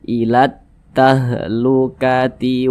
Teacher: huruf lamnya ini dia tidak dibaca. Dibaca idgham, langsung masuk di huruf yang di depannya. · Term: alif lam syamsiyah